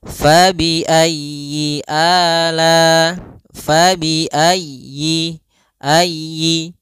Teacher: usahakan huruf ya-nya ditekan